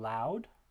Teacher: this consonant is a voiced alveolar lateral liquid